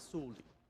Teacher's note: so the o is so quiet that you basically don't hear it um it sounds kind of like just suli but it's technically